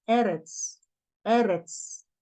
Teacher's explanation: Sequência de segol, quando vocês virem dois segol, um ao lado do outro, a sílaba tônica está sempre no primeiro. Então, é eretz, não é eretz, é eretz.